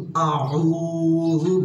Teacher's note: হামজা 1 নম্বর মাখরাজ হলকে শুরু হইতে